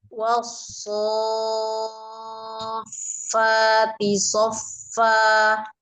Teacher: dia alif lam syamsiyah, maka alif lam diabaikan, langsung ditasdidkan ke huruf shad gitu ya. Jadi dibacanya itu ya Ustazah, langsung ke so ya.